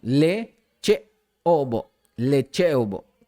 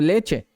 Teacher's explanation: Hay que también acentuar mucho el sonido de la vocal glotalizada